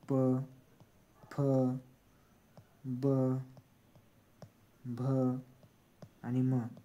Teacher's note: उ आणि उ हे ओष्टी वर्ण आहेत